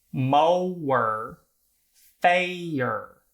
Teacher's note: some American dialects, such as in the South, make these words that are just or and air into ower and ayer